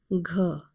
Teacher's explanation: this is the G sound with aspiration added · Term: G with aspiration